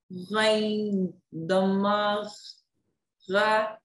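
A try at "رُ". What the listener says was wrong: Dhamma makes an oo sound. Ru. But try to gargle it still. Ru.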